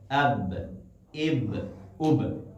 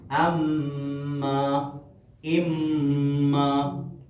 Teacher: با اور میم دونوں ہونٹوں کو آپس میں جب ملاتے ہیں تو یہ حروف ادا ہوتے ہیں. لیکن فرق علماء نے بیان کیا ہے کہ با جو ہونٹوں کی تری ہے وہاں سے ادا ہوتا ہے.